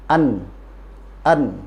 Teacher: Nah, sekarang kita lihat yang pertama, ujung lidah ini akan bertemu dengan gusi atas, hurufnya nun